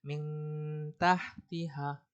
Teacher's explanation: Jadi nunnya ini seperti terbaca, tapi tidak terlalu terbaca. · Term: ikhfa a'la